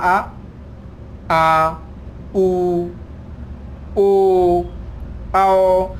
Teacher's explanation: पश्च यानी कि पीछा, यानी कि जीभ के पीछे का हिस्सा ऊपर उठे, यानी कि जीभ के पीछे का हिस्सा सक्रिय है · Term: पश्च स्वर